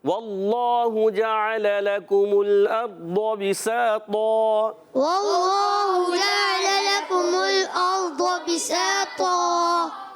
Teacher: ضاد کو موٹا رکھنا ہے، طا کو موٹا رکھنا ہے۔ اللہ کے لام، اللہ پاک کے لام کو بھی موٹا رکھیں گے۔